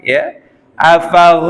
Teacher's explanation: langsung menuju lam pada lafaz Allah yang harus dibaca tafkhim juga jadi ya Allahnya dibaca tebal lamnya karena sebelumnya huruf berharakat fathah